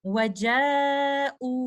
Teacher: تو یہاں پر جب میں رک رہی ہوں تو میں یہاں پر مد البدل کے 2 کاؤنٹس کے ساتھ رکوں گی اس طرح سے وجاؤ.